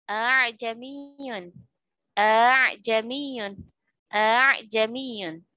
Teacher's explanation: Hamzah yang dibaca ringan, alif yang dibaca ringan pada riwayat Hafs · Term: alif tashil